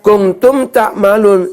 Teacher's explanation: saya membacanya tidak mendengung. Ya. Saya bacanya jelas, maka masuk huruf izhar syafawi.